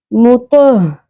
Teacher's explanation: تو زبر ہ، تو کو ہم پر کریں گے اور ہا کا مخرج اقصا حلق یعنی کہ حلق کے سب سے نچلے حصے سینے کی جانب والے حصے سے ہم نے ہ ادا کرنا ہے. اس میں سانس کی آواز ح والی ساؤنڈ نہیں آنی چاہیے